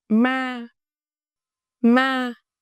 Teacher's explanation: Flat tone, steady pitch, no rising or falling. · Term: thanh ngang